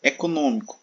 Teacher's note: Observe que a antepenúltima sílaba de econômico é a mais forte, A antepenúltima.